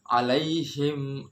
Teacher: bacaan mim matinya itu jelas benar-benar jelas tidak didengungkan contohnya alaihim Nah itu mim sukun bertemu dengan Hamzah nggak perlu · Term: izhar syafawi